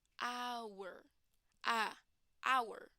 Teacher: The H here does not have a sound. So the sound that comes first is a vowel sound. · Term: silent H